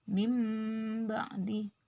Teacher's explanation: Jadi nun sukun ini masuk berbunyi ba, dimasukkan ke huruf ba berbunyi huruf mim